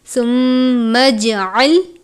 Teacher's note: میم مشدد پر غنہ کرتے ہیں، پہلے ہم غنہ کریں گے اور اس کے ساتھ ہی جیم ہے، جیم پر قلقلہ کرتے ہیں